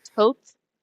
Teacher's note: the way that you're supposed to pronounce it, the TH, it's supposed to be like an aspirated T. So instead of the usual like um the way that we usually say Yeah, TH, it's supposed to be like Toth, you know?